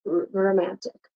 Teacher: sometimes I've heard and I've said romantic, like without the O